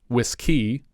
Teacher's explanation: putting the emphasis on the second syllable to sound vaguely French